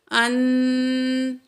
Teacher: اخفا کرنا ہے۔ نون کی آواز کو ناک میں چھپا کے پڑھیں گے